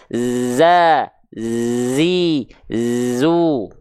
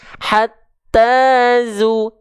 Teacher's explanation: Iya, desisannya seperti lebah. Harus ada desisannya. Jangan sampai malah jadi kayak huruf S, huruf sin. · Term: sofir